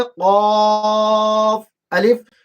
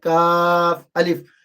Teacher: یہ قاف موٹا ہے، قاف الف، اور یہ کاف باریک ہے